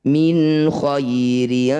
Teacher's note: Nun sukun bertemu ko disebut bacaan izhar halqi. Bunyi nun baca jelas tidak usah didengungkan.